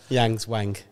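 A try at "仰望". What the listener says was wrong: No. No, it's just Yang. Wang.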